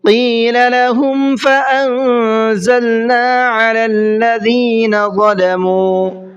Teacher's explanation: قیل کے قاف کو منہ بھر کے پڑھنا ہے